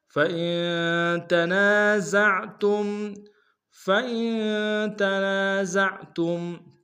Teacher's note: فَإِن میں حمزہ کو نون کے سامنے لائیں گے، نون ساکن غنہ کریں گے، تنا میں نون سالف مدہ کے انداز میں کھینچیں گے، زا کو عین کے سامنے لائیں گے، تا کو میم کے سامنے لائیں گے، میم ساکن غنہ کریں گے۔